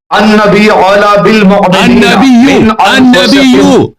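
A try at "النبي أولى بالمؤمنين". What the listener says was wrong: النبی اولا نہیں اولا النبی بولا ہے النبیو ہے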